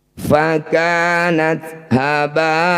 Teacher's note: Mad tabi'i bertemu hamzah di satu kata, disebut bacaan mad wajib muttasil. Cara bacanya ba yang bertanda layar ini, panjangkan 6 harokat atau 6 ketukan.